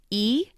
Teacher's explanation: The E sound is called a front vowel because it's made in the front of the mouth